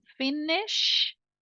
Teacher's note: é um som sem voz se você coloca voz nesse som ele vai virar J de girafa